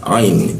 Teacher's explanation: Ain di bawah tenggorok, di jakun dia. Ain. Ya dimatikan ya.